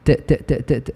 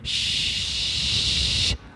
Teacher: because ت is a stop و ش is a fricative